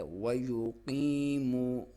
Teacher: یا ساکن سے پہلے زیر ہے تو اس کو یا مدہ کہا جاتا ہے اور اس کی لمبائی ایک الف کرنی ہے. یا کو باریک، قاف کو موٹا.